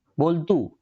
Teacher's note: બોલતું તરીકે તમે બોલો ત્યારે તમારે ત ની ઉપર વજન આપવો પડતો નથી અને વજન નથી આપવો પડતો એટલા માટે આપણે આને લઘુ જ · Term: મંદ ઉચ્ચાર